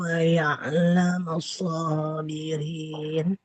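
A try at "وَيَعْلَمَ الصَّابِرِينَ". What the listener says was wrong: Shotnya panjang kan? Jadi kurang terasa tasydid di huruf shotnya. Huruf shotnya dialirkan dulu suaranya.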